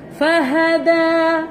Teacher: Makhraj untuk huruf dal, hujung lidah belakang gigi atas.